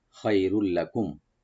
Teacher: হয় রুল লাকুম, লাকুম এখানে আমরা থেমে যাব, এখানে থেমে যাওয়া উত্তম, এখানে অনেক জরুরি। তো থামলে এখানে মিম সাকিন আমরা এখানে এজাহার করবো, গুন্না হবে না